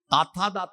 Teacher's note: നാവിന്റെ അറ്റം പല്ലുമ്മ തൊട്ട് പറയുന്ന അഞ്ച് അക്ഷരങ്ങൾ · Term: ദന്തം